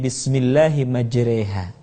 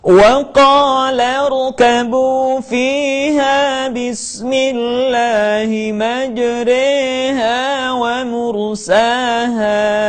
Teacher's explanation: imalah adalah membaca huruf yang berharakat fathah dimiringkan ke kasrah